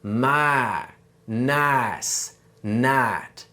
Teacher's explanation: for a Southern accent, we cut off that second sound, which gives us my, nice, night. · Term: I shift